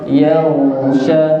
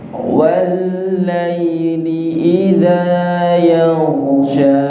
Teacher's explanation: Di kalimat yaghshaha ghain sukun, ghain itu juga mengalir nggih. Yaghsha. Jadi tidak mantul.